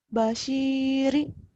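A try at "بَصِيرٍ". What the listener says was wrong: Bukan kesin ya. Agak monyong sedikit. Memang nggak monyong, tapi mau nggak mau harus latihannya seperti dimonyongin. Jadi kalau udah ketemu basiri nggak usah monyong, kan basiri gitu, basiri ya sod ya. Ya sod bukan basiri, kalau sin kan beda. Sin basiri ini basiri sod.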